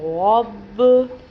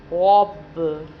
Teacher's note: اور با حروف قلقلہ میں سے ہے اس لیے اس کو قلقلہ کر رہے ہیں۔ با ہونٹوں سے ادا ہوتا ہے جو اس لیے ہونٹ دوبارہ ہونٹوں سے ٹکراتے ہیں تو پھر یہ غب کی آواز آتی ہے۔